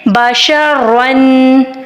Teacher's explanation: جب 2 زبر آئیں گی تو تب بھی ہم نے را کو موٹا ہی ادا کرنا ہوگا